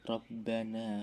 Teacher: mat tabi'i karena huruf nun berharokat fathah bertemu alif, bacanya panjang 2 harokat